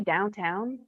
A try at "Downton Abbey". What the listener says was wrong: No, it's Downton Abbey. It's not downtown.